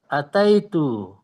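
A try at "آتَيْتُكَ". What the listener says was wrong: Panjang A-nya. Ataitu.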